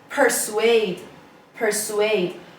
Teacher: two syllables and the stress is on the second syllable